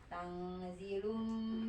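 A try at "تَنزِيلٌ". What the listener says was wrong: Panjangkan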